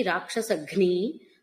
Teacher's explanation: రాక్షసఘ్ని అన్నప్పుడు మహాప్రాణ ఘకారమే పలకాలి.